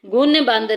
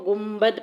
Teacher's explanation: یہ قاعدہ آپ اردو میں بھی پڑھتے ہیں، جیسے گنبد، نون کے بعد با آ جاتا ہے تو آپ اس کو گنبد یعنی کہ میم کی آواز سے، نون کی آواز کو میم کی آواز میں بدل دیتے ہیں۔ گن بند نہیں آپ پڑھتے، اس کو گنبد پڑھتے ہیں۔ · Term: اقلاب